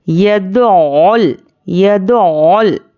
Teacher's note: یدعول، یا پر زبر ہے، دال پر پیش ہے، ان کو بھی حرکات کو جلدی پڑھنا ہے۔ عین پر تشدید ہے تو تشدید والے حرف کو ہم سختی سے پڑھیں گے، اور عین کو حلق سے نکالنا ہے۔ یدعول یدعول، عین پر تشدید ہے تو تشدید والے حرف کو ہم یہاں پر پیچھے والے حرف سے ملا کر پڑھیں گے۔